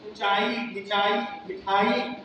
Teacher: अब ऊंचा नीचा मीठा छोटा बात सब में ह्रस्व हो गया है शुरू में